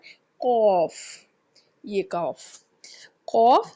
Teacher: ख ग इसके बाद आ जाता है कौफ ये कौफ कौफ जुबान की जड़ और तालू के नरम हिस्सा से जुबान की जब जड़ जब तालू के नरम हिस्सा को लगती है जुबान की जड़ उठकर जब तालू के नरम हिस्से को लगती है तो कौफ अदा किया जाता है